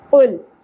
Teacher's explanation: لام ساکن کا قلقلہ نہیں کرنا